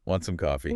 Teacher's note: We rely completely on the tone of our voice going up at the end to show it's a question.